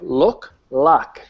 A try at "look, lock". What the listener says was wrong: But you're going a little too long on look.